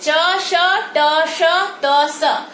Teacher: देखेंगे जीभ मूर्धा में जाके एकदम ठक से लगती है, और जहां से आप त बोलते हैं वहीं से दंत्य स का उच्चारण करेंगे